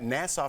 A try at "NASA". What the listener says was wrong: It's not Nassau, it's NASA.